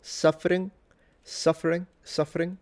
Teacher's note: he actually did a little trill suffering, suffering, suffering, but he fully nasalizes. · the G in that situation is acting as a nasalization of the N